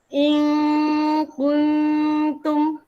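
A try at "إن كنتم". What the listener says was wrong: Tak tajam lagi kun. Kun. Pertama cerita dulu makhraj. Mana makhraj ta? Hujung lidah sentuh gigi kacip atas. At. Sebut at. Kun. Bukan cerita bibir tau. Itu side effect, kesan sampingan. Yang fokus kita adalah cerita lidah.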